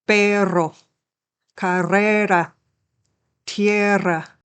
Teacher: The RR combination indicates a longer rolled R sound, like R. Listen to it in the example words.